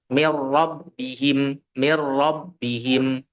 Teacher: bila ghunah itu tidak disertai dengung maka tidak pula ditahan dua sampai tiga harakat · nun langsung masuk ke huruf ro tanpa menyisakan ya sifat huruf nunnya